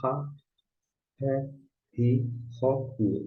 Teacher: O re aqui começa com H. Seria esse H na palavra house. Bem aspirado, bem fraquinho.